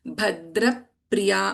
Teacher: Bhadra Priya Pa also will get doubled.